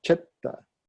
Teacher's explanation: First syllable strong, second syllable light.